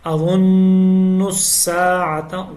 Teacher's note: اظن الساعة، غوا کو موٹی آواز میں پڑھنا ہے، نون مشدد کے اوپر غنہ ہے، اور نون کو آگے سین کے ساتھ ملانا ہے